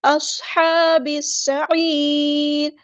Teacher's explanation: سیٹی بھی آئے گی، حروف صفیریہ میں سے ہے، اصحاب السعیر، با کو ہم نے سین کے ساتھ ملا دینا ہے ، حمزۃ الوصل ہمارا ڈراپ ہو